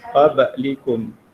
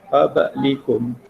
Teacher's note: iaitu pada huruf ba yang mati, qablikum. Lantunannya ialah pertengahan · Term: qalqalah sughra